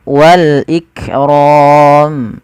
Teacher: Wal ikram, lafal kaf ik, tapi bukan ikram, jangan sampai memantulkan huruf kaf. Kemudian pada lafal ro-nya ditebalkan, yaitu ro tafkhim, kemudian diakhirkan dan dimatikan hurufnya mim.